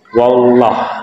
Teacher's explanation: kalau kita baca wallah, maka bukan lam yang keluar tapi waw. Wallah, jadi lam harus jelas.